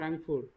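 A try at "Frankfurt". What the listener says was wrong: ফ্রাঙ্কফুর্ট। ফ্র্যাঙ্ক না, ফ্রাঙ্কফুর্ট।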